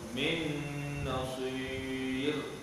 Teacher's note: Nun mati bertemu dengan nun idgham ma'al ghunnah dengan dua harakat pada makhraj nun · Ra pada nasir, ra itu dibaca tebal ke nipis, dibaca dengan nipis ya.